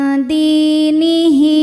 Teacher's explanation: Maka huruf dal yang berharokat kasrah kita panjangkan sepanjang 2 harokat. Dinihi, hi hukumnya adalah mad silah qasirah. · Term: mad tabi'i zahiri